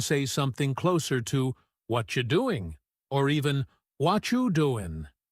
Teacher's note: The what are you gets squeezed into something that sounds almost like one single word. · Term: connected speech